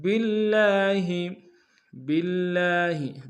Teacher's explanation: با کو لفظ اللہ کے لام کے سامنے لائیں گے، تشدید زور دیں گے، لام کے اوپر کھڑا زبر ہے، ایک انداز میں کھینچیں گے۔